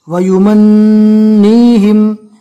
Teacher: نون مشدد کا ایک الف کے برابر گننا کرنا ہے اور نون کو ایک الف کے برابر کھینچنا بھی، اس لیے کہ یہاں پر یا مدہ ہے۔